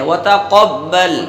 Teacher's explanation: لام کے مخرج میں زبان لگانے کے بعد وہاں سے ہٹانا نہیں ہے، وہیں پر آواز ختم کرنی ہے